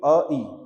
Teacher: पहले गले में जोर पड़ रहा है फिर तालु में भी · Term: कंठ तालव्य